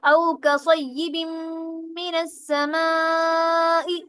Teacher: یہاں پر مشدد شد آ گئی ہے میم کے اوپر، تو اس میں غنہ میں کیا کرتے ہیں، ایک الف کے برابر ناک کے بانسے میں آواز دے کر جاتے ہیں